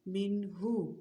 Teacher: اب اس کو وقف کی حالت میں پڑھنا ہے من، یعنی ہا کو ساکن کر دیں گے. اب دیکھیں کوئی اخفا غنہ کی آواز آئی نہیں نا، ناک میں آواز لے کر گئے نہیں، اس کو اظہار کہتے ہیں.